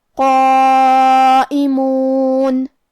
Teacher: یہ مد واجب متصل ہے، اور مد واجب متصل کا معنی ہے کہ حرف المد اور اس کی وجہ جو کہ حمزہ ہے دونوں ایک ہی کلمہ میں ہوں. اس مد میں ہم اپنی آواز 4 مد کے برابر لمبی کریں گے